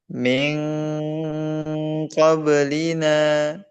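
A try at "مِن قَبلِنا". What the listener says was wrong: Miong, tebalkan. Miong qablina. Bukan ming, tapi miong. Miong qablina.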